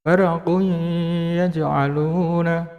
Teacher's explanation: Jadi dhammah tanwinnya ya, Domah tanwinnya dileburkan ke dalam huruf ya